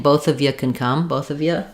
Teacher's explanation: If I'm saying both of you can come, both of you, you sometimes gets reduced to a ya, but less likely in this combination, in this phrase.